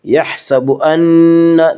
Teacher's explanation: نون مشدد غنہ ہوگا، غنہ کی مقدار 1 الف ہے